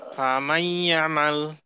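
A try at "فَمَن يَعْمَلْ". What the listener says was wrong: আসছে ফামান না বলে ফামাই ইয়ামাল। ফামাই ইয়ামাল। ইয়ামাল এটা আসলে মিম।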